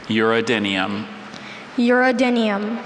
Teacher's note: Second syllable, that second vowel. It's a schwa.